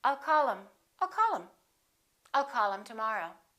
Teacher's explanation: instead of saying call him we'll drop the H and we will say I'll call him I'll call him I'll